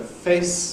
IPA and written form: feɪs (face)